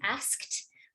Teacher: We want to hear that with a nice KT sound at the end